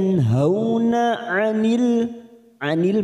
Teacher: ada nun sukun bertemu ha namanya bacaan kita baca jelas tanpa mendengung